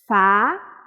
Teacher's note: vou transformar a minha voz em no som do F colocando os meus dentes de cima contra o meu lábio inferior